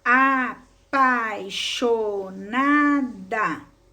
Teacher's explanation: O encontro vocálico da palavra apaixonada é formada pela vogal e pela semivogal I, que recebe esse nome porque é pronunciada com menos intensidade do que a vogal que se antecede. Em palavras com esse tipo de encontro vocálico, é comum o falante suprimir as semivogais na pronúncia.